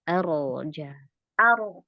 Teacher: menebalkan rnya jangan dua bibir jadi bibirnya gak usah ikut maju